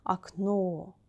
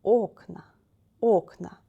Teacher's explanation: we need to change place of accent place of stress aknow in form of singular the last letter o is stressed in form of plural the last vowel is not stressed the first word is stressed okna and we need to memorize